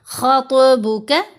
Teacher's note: خا زبر تو ساکن خط، خط خط، اور تو کا پھر مخرج بھی بڑا اچھا ادا ہو جاتا ہے جب اس پر قلقلہ ہوتا ہے۔ دونوں کو، خا اور تو دونوں کو موٹا بھی پڑھنا ہے